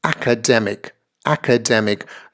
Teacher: the stress principally is on the third syllable here right and then secondarily on the first syllable